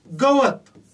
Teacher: गवत हा शब्द जरी बघितला तरी व मधल्या अ चा उच्चार हा लांबटच होतोय. गवत वत मधल्या अ चा उच्चार लांबट होतोय.